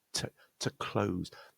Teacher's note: I'm going to express that TO word as a T followed by a schwa